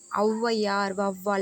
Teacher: முதலில் வரும்பொழுது இரண்டு மாத்திரையில இருந்து குறைந்து ஒன்றரை மாத்திரை அளவில் ஒளிக்கிறது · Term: அவகார குறுக்கம்